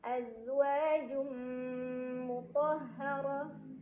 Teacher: Azwajum, ada idgham di gunnah karena ada tanwin dhammah yang bertemu dengan huruf mim. Cara bacanya tanwin dhammah dileburkan atau dimasukkan ke mim sambil dengung.